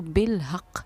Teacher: جزم دے کر ہم نے سانس توڑا تو ہم نے یہاں پر قلقلہ کیا